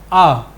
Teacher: विवृत स्वर एक ही है और वह है आ ठीक आ जिवा एकदम नीचे मुख पूरा खुला